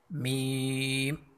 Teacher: دونوں ہونٹوں کے ملنے سے